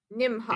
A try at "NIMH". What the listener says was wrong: The H is silent.